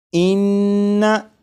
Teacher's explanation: नून मुशद्दद की अदायगी के वक्त ज़बान तालू से लगेगी